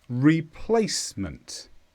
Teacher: this is a noun and the stress is on Place replacement